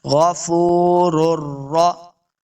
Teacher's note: پہلے را کو دوسرے را مشدد کے سامنے لانا ہے بغیر غنہ کے، یہاں پہ غنہ نہیں کریں گے.